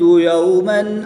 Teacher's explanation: واو ساکن سے پہلے حرف پر زبر ہے تو یہاں پر واو لین ہوگا، بغیر کھینچے پڑھیں گے. وقف کی حالت میں میم کی 2 زیر کو ساکن کر دیں گے اور جب میم کی 2 زیر کو ساکن کریں گے تو وقف کی حالت میں یہاں پر مد لین عارض ہوگی، 2 سے 3 الف تک کھینچ کر پڑھیں گے.